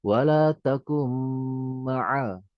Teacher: Cuma karena ada tasydidnya, nun tidak dibaca, jadi langsung dimasukkan ke mimnya.